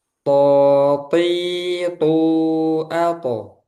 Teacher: huruf to tebal dan jahar ya. Jangan sampai ada udara.